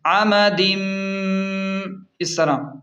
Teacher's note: تنوین یعنی دو زیر کے بعد میم آ رہی ہے تو ملا کر غنہ کریں گے.